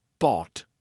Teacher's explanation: instead of releasing it, instead of aspirating it, instead of pushing air through, you're going to just stop. That's why it's called a stop T, right? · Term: held T